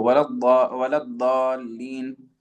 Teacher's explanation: The only reason why it might sound like a Dad is because it's a heavy Dal.